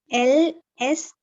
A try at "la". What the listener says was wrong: That is not S. That is A. A.